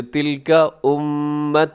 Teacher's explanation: میم پہ تشدید ہے، اب غنہ کیجیے گا